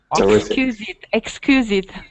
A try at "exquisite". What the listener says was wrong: get the qu sound. Exquisite.